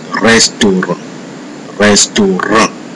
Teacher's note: In French, unlike in most English words, it is the last part of the word that bears a heavy stress.